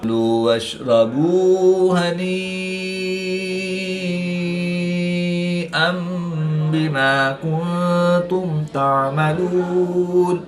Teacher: نون ساکن کے بعد تا حروف اخفا میں سے ہے تو یہاں پر اخفا ہوگا، یعنی غنہ زمانی کر کے پڑھیں گے